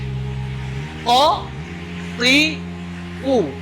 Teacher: pangkal lidah, pangkal lidah bertemu dengan langit-langit. Ko, dia ada letaknya bertemu dengan langit-langit. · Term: huruf ko